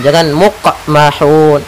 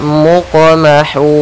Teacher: Kemudian ada huruf qaf yang berharakat sukun, maka kita namakan dengan qalqalah. Yaitu suara qafnya memantul tapi tidak ada tambahan huruf hamzah